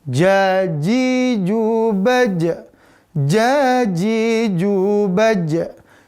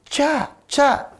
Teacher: Maka di sini udaranya harus ditahan, ya. Tidak boleh ada keluar udara ketika melafalkan ja. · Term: udaranya tertahan